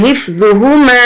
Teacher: یہاں ہم نہ تو ذوا کو کھینچیں گے نہ ہی ہا کو، کیونکہ دونوں پر زبر ہے